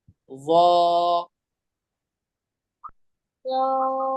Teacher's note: जबान की नोक को बाहर निकाल के ऊपर के दांतों में लगाना है। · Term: ज़ा का मखरज